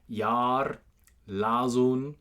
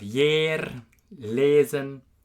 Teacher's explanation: The third change due to Frisian influence, we have long A becoming long E.